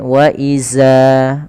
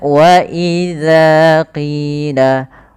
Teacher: kesalahan yang terjadi, yaitu mengganti huruf dzal diganti dengan huruf zai